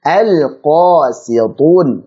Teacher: Si tipiskan, tu tebalkan.